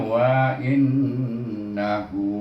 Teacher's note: Kemudian ha baris depan bertemu dengan ain berbaris, nun pun berbaris, jadi dia kena tambah huruf waw kecil di sana. Makna kita guna hukum mat silah qasirah, bacanya dengan dua harakat hu itu. Jadi bunyinya wa innahu.